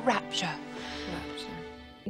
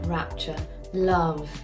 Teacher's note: is doing a marvellous job of keeping the resonance there, of things like rapture has that glottal catch. I call it a catch, I distinguish between them, because a glottal stop, it's so much harder, but rapture, it just gives it like this little nudge, rapture, love.